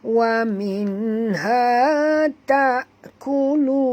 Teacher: Wa minha ta'kulun, tak, ringan, jangan baca ta, baca tak, kerana huruf ta adalah huruf istifal, dan di sini bukan ain, jangan baca ta tapi baca tak, ringan, kulun. Kita berhenti dengan mad arid disukun dan bunyikan nun yang kita matikan di hujung ni dengan jelas